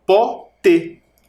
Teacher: tem duas sílabas também as duas terminam terminam com e porém café o som mais forte está na última sílaba no fé no pote a sílaba mais forte é o pó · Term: oxítona